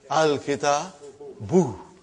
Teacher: Instead of bun, it became bu.